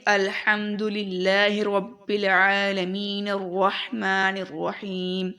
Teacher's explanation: جب ہم پڑھیں گے تو کنیکٹ کریں گے، ملا کر پڑھیں گے، الف جو ہوگا وہ گر جائے گا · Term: حمزہ وصل